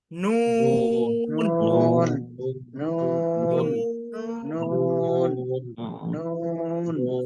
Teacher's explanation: জিহ্বার আগা তার বরাবর উপরে তালুর সঙ্গে লাগিয়ে পড়তে হবে